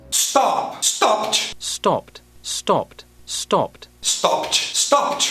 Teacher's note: um falante simplesmente trancando o som contra os dentes de cima sem soltar o ar. O que acontece muito frequentemente em inglês americano.